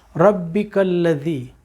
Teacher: اب را کے اوپر زبر آیا، تھوڑی سی اپنی زبان کو اوپر کر دیجئے تاکہ یہ را پر پڑھی جائے، مفخم پڑھی جائے